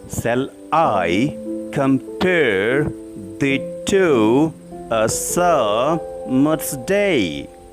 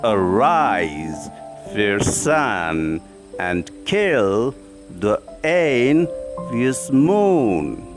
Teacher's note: It consists of a line of 5 iambic feet, 10 syllables, 5 unstressed and 5 stressed. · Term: iambic pentameter